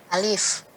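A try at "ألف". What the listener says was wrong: Ya, A-nya harus dibuka. Alif.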